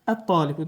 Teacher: ta hərfinin məxrəci ləm hərfinin məxrəcinə yaxındır. Ləm kimi onun da dil və dişin iştirakı ilə tələffüz olunur.